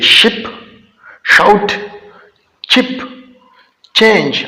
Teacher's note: हम अपना जो जुबान है उसका मिडल पार्ट उठाकर हार्ड पैलेट के साथ टच करते हैं इन साउंड को प्रोड्यूस करने के लिए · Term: पैलेटल साउंड